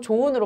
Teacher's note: 자, 좋은, 좋다 어간 조에다가 은을 붙였을 때 여기 보시면 히읗이 탈락되고 조은으로 발음되는 것을 볼 수가 있습니다